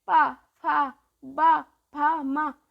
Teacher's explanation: है देखो जीव हम लोग की ओठ से बोल रहे ना ओठ स्पर्श हो रही है आपस में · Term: ओष्ठ